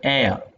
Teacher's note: the Glide will take place towards a central vowel like uh in the pronunciation of the word air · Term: centering diphthongs